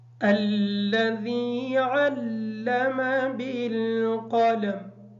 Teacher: بالقلم کا جو قاف ہے اس کو موٹا پڑھیں گے، اور میم حالت وقف کی وجہ سے ساکن ہو جائے گی